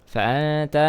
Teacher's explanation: nun sukun bertemu huruf ta dibaca ikhfa